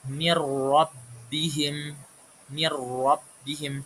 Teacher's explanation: langsung masuk ke huruf setelahnya ro ke huruf ro tanpa membaca nunnya. Jadi nunnya juga enggak kedengaran dengungnya. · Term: idgham bila ghunah, idgham bila gunnah